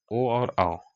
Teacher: कंठ ओष्ठ, ओ और औ, आवाज कंठ से निकल रहा है और ओठ थोड़ा सा सट रहा है, इसलिए कंठ ओष्ठ।